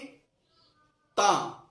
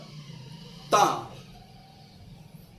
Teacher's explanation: इसका मखर है जबान का सिरा और ऊपर के दांतों की जड़